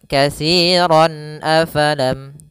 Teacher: fathatain an ketemu dengan huruf izhar berupa hamzah maka suara tanwinnya harus dibaca dengan jelas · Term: izhar halqi